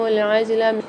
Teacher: عجلہ میں جیم کے اندر قلقلہ کر کے پڑھیں گے، یہاں پر اس کو ملا کے پڑھیں گے عین کے ساتھ۔